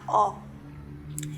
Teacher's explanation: Esta vocal era una O, pero abierta